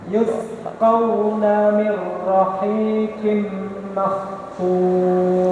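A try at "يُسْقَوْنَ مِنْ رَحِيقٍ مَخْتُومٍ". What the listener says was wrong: Qafnya kurang tebel, tetap tebel. Mir rahiqin makhtum ya. Rohnya ya jangan kecantol. Mir rahiqin.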